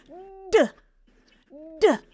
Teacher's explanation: A true D, I'm really exploding it. I'm stopping the air completely. And then I'm letting it go.